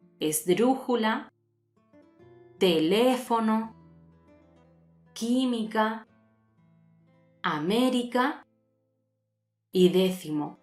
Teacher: Pasamos a las palabras esdrújulas, cuyo acento recae en la antepenúltima sílaba.